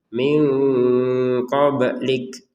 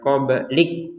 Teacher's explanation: Untuk huruf kaf ada nafas sedikit keluar ya.